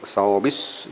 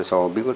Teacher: Sawbis bukan sawbil tapi sawbis karena ada tasdid, sehingga alif lamnya tidak terbaca